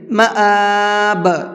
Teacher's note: حسن المآب، جب آیت کریں گے تو با کے اندر قلقلہ کر کے پڑھیں گے۔ مآب، یہ جو لاسٹ میں آواز نکل رہی ہے یہ قلقلے کی آواز کہلاتی ہے